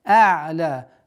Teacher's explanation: Непринужденная, не резкая остановка над айном и удлинение в размере 2 огласовок.